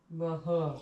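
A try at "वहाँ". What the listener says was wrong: Waha. Waha. So it's long ah.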